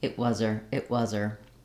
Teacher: with her it gets reduced to ER the H can drop